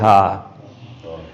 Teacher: ہمارے لیے آسانی یہ ہو جائے گی سمجھنے کے لیے کہ ہم اس کو سمجھیں کہ یہ سینے سے آواز آ رہی ہے